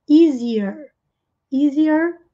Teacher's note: Easier, easier. Aqui é com som I no início e um R retroflexo no final